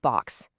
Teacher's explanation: it's actually like two sounds got squished together. It's a k sound and a s sound all at once.